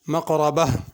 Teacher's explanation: مقربہ میں قاف بھی پر ہوگا، را بھی پر ہوگی، مقربہ، اور اگر ملا کے پڑھنا ہو پھر تا پڑھی جائے گی۔